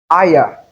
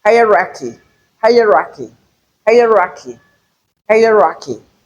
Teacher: On the first syllable, we have a triphthong.